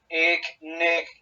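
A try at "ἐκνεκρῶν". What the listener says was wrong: Bien, aquí te suena como si dijeras Nerón. Necrón, necrón, capa, no es una G, sino una capa. Aquí sería más el sonido más oclusivo. Necrón, necrón.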